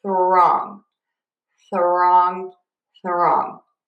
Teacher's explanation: add a teeny tiny uh sound between your th and your R. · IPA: /θrɔŋ/